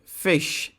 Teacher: the word fish begins and ends with voiceless fricatives